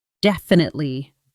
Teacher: Definitely DEF-i-nite-ly (memorize the ENTIRE pattern) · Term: Stress Patterns